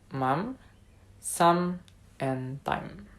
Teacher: This sound is produced by closing the lips together and then letting the air escape through the nose.